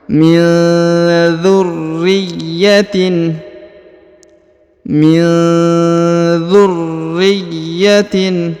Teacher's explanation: Maka dibaca min dzurriyyatin ya, dibaca disamarkan dan didengungkan.